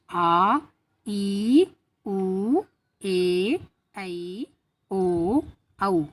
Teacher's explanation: जिन स्वरों के उच्चारण में मूल स्वरों से दुगना समय लगता है उसको दीर्घ स्वर कहलाते हैं, यानी दीर्घ स्वर कहते हैं।